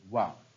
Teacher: वा एक संयुक्त प्रयत्न का वर्ण है, अर्थात ये किन्हीं दो उच्चारण स्थानों से उच्चरित होता है। इसका जो उच्चारण स्थान है वो है दंतोष्ठ, डी विकल्प में।